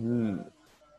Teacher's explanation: हम अपनी जो टंग है उसको बिल्कुल ऊपर की तरफ रेस करते हैं, कर्ल करते हैं और उसकी साइड से एयर को फ्लो करते हैं. लैटरल इनको कहा जाता है, लिक्विड्स भी कहा जाता है.